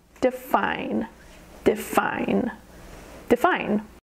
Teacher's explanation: Define has two syllables, define. The emphasis is on the second syllable